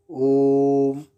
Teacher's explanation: यहाँ स्वर 3 मात्रिक है अर्थात दीर्घ से भी अधिक समय लगा तो ये प्लुत स्वर होगा, जिसका प्रयोग वेदों में होता है।